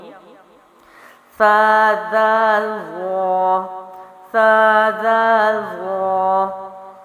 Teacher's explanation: زبان کی نوک کو اوپر کے سامنے والے 2 دانتوں کے اندرونی کنارے سے لگا کر، یہاں پر تو جو ہے کہ ثا اور زال کے لیے زبان اسی نوک پر لگے گی اور آواز باریک رہے گی، لیکن وا کے لیے دیکھیں پیچھے سے زبان موٹی کر دی جائے گی، اور ادائیگی کیا ہوگی؟ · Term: نرم حروف